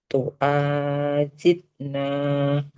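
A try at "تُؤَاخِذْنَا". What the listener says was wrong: Enggak huruf jim Ibu. Titiknya di atas, bukan di bawah. Maka huruf kho, bukan huruf jim. Tu khizna.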